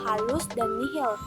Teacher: Proses pembunyiannya yaitu bunyi frikatif glotis tak bersuara